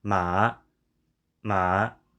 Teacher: there is definitely not that great of an uptick in what I said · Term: third tone